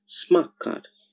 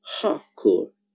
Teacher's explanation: T coming together with K changes to K